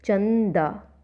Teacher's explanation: अनुस्वार का उच्चारण स्थल नाक से होता है